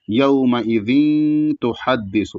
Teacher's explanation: تحدث میں تا ہے تو پتلا ہوگا، اس کے بعد بڑا ہا ہے تو بڑا ہا ادا کیا جائے گا